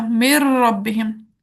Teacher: मुदगम यानी नून साकिन को मुदगम फी यानी रॉ मुतहरिक में हमने दाखिल कर दिया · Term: इदगाम सगीर